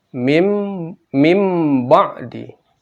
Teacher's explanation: Setelah itu ada ba huruf fathah atau di atas menjadi mim ba'di. Jadi bukan min ba'di tapi menjadi mim